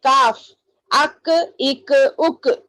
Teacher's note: پھر اس کے بعد کاف بھی اس سے تھوڑا نیچے، قاف کی جگہ سے ذرا نیچے منہ کی جانب ہٹ کر کاف ادا ہوتا ہے. دیکھیے اس میں آواز نہیں گونج رہی.